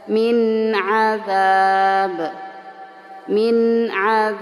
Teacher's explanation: harus dibaca jelas nun sukun ketemu dengan Ain ada izhar hal halqi jadi harus jelas minab minab ya Jadi tidak samar